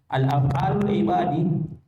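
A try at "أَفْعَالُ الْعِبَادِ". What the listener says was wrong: af'alu tidak ada alnya.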